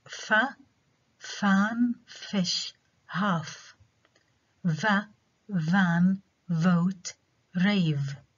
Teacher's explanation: labiodental fricatives are articulated with the near contact of the bottom or lower lip and the upper front teeth so articulation between the lower lip and the upper front teeth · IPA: /f/